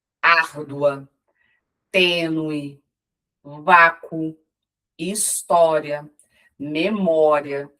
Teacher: Em todas essas palavras, o que nós observamos é que elas apresentam um ditongo crescente